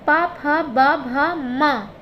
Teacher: पा वर्ग की जो ध्वनि है वो ओष्ठ से है